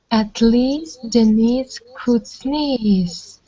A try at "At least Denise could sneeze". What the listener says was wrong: Yeah, you need to, when you go up, it's not at least Denise could sneeze. You have to go up. At least Denise could sneeze. Sneeze. Sneeze. Mm. Mm. Sneeze. So what I'm trying to show you is how we do emphasis. The way that you guys do emphasis in Russian, in the Russian language, and the way that we do emphasis is different.